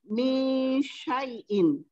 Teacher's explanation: Min nun mati berjumpa dengan shin, juga ikhfa hakiki dan dibaca dengung 2 harakat